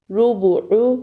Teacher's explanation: با میں دونوں ہونٹوں کا اندرونی تری والا حصہ آپس میں ملے گا اور عین کو حلق کے درمیان سے ادا کریں گے۔ تینوں حرف پر پیش ہے اس لیے پیش کی ادائیگی کے لیے ہونٹوں کو گول کریں گے تو پیش کی صحیح ادائیگی ہوگی۔